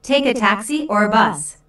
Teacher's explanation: notice the rising intonation on Taxi the first choice and falling intonation on bus the second choice